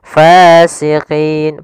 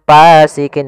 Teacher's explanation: hati-hati dalam melafalkan Fa harus ada nafas yang dikeluarkan karena dia sifatnya S jaryanun nafas jangan pasikin dengan P gitu